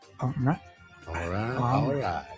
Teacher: the first syllable of the last word is at a higher pitch than the second syllable